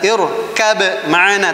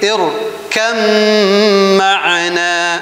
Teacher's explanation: idgham mutajanisain ba ke mim, yaitu bukan dibaca irkab ma'ana tapi irkam ma'ana